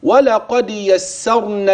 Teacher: الراء ان جاءت ساكنه وقبلها مفتوح كما في يسرنا فهي مفخمه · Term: الراء الساكنه